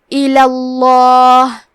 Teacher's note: لفظ الجلالہ کے لام کا حکم ہے تفخیم، تو ہمیں حرف اللام کو موٹی آواز میں پڑھنا ہے